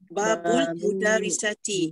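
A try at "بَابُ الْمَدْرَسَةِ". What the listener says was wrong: Bukan mudarisati, madrasati. Madrasati. Bukan mudaris, madrasah, sekolah.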